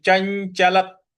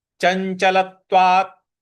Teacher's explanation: ल के बाद जो त है उस पर हमको आघात देना है